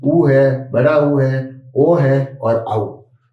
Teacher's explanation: फिर पश्च भाग में आ, क्योंकि ध्वनि अंदर से आ रही है तो वो जीभ के पीछे वाले भाग से प्रभावित हो रहे हैं ये